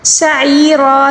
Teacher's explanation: عین کو حلق کے درمیانی حصے سے ادا کریں گے